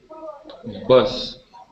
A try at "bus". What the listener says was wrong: This is not a long U sound. We do not say bus. It is bus with a short U sound.